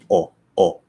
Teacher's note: the o is very static